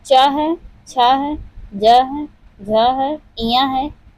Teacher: तालु से उच्चारित होने वाला च है। तो च वर्ग के जितने भी हैं वह सब तालु से उच्चारित होते हैं।